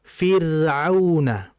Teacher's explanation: Begitupun kalau ada ra mati, sebelumnya ada hurufnya, ada huruf ya, sebelum huruf ra ada huruf bertanda kasrah, maka ra-nya mengikuti huruf sebelumnya. Tipis juga otomatis kan?